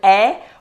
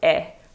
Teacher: sometimes the sound can be a little more closed so you can have two variations it's more open a or it's more closed a